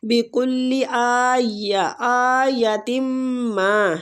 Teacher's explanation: حمزہ کو کھینچیں گے کھڑی زبر کی وجہ سے۔ تم ما، میم کو میم مشدد ہے، غنہ کریں گے اور کھینچیں گے۔